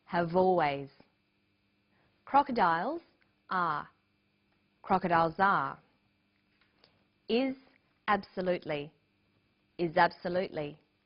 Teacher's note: in conversation we link the final consonant sound v with the initial vowel sound or.